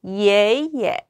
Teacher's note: 올라갔다가 살짝 떨어지는 음으로 발음해 주시면 되고요. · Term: 경성